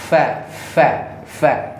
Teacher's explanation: bibir bawah kita yang bagian dalam ketemukan sama gigi atas